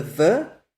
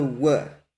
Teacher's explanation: in Yemenite Hebrew, the soft bet is the v and the wow is the w